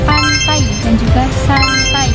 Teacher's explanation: ini kombinasi dari vokal A yang bergeser ke I